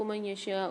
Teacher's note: من یشاء میں نون ساکن کے بعد یا مشدد آ رہی ہے، ادغام مال غنہ والا قاعدہ ہوگا، غنہ کر کے پڑھیں گے اور شین کو کھینچ کے پڑھیں گے 5 سے 6 الف میں مقدار